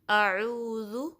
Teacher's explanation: ذو کو نرمی سے ادا کرنا ہے، اور پیش ہے اس پہ تو اس کے لیے بھی ہونٹوں کو گول کرنا ہے۔ اعوذ اس میں کیا ہے، زال کا مخرج کہ آپ کی جو زبان کی نوک ہے اوپر کے 2 جو دانت ہیں اس کے کنارے سے لگے گی تو زال ادا ہوگا۔